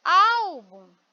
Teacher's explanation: Então nesse caso a penúltima é a mais forte algo Olha como eu coloco mais força no ao é então